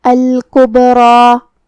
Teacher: کلمت الکبریٰ میں یہاں با ساکن ہے، تو یہاں با کا حکم ہوا قلقلہ. قلقلہ کا معنی ہے حرف ساکن کو ہلانا، تو ہم حرف البا کو ہلاتے ہوئے یہ کلمہ کو ادا کریں گے · تو ہم را کو اور مد الف کو دونوں کو بھاری آواز میں ادا کریں گے